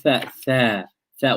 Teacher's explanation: When you say tha, you can feel the breath flowing without any struggle. There's no vibration in the throat. There's no struggle of the air trying to escape. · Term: hams